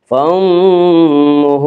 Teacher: میم مشدد غنہ ہوگا، غنہ کی مقدار 1 الف ہے۔ فَأُمُّهُ، ہا کے اوپر الٹا پیش ہے، الٹا پیش قائم مقام ہے وا مدہ کے، اس لیے الٹا پیش کو 1 الف کے برابر کھینچ کر پڑھیں گے۔